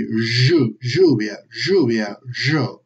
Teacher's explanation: For instance, when you say the words containing y or double l, ella, like lluvia or yo, okay? If you say those words with an exaggerated Argentinian accent, you're going to be doing this z sound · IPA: ʒ